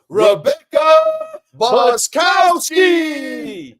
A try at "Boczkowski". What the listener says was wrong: The Z is silent though, but otherwise you did pretty good.